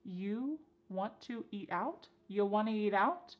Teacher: And then we have reduced want to to become wanna to. This is a common reduction in English.